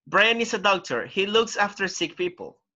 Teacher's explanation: remember the intonation right it goes down it goes down because you are not reading questions